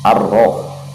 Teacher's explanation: Huruf ra itu termasuk dalam huruf-huruf syamsiah. Jadi alif lam bertemu atau plus huruf Syamsiah itu lamnya tidak dibaca. Ar-roh, langsung kita menuju ke ra-nya. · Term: alif lam syamsiah